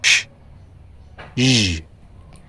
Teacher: Post-alveolar, the tongue slightly behind the alveolar ridge. For the example, sh, zh, Palato-alveolar, a subset of post-alveolar sounds where the tongue interacts with both the alveolar ridge and the hard palate.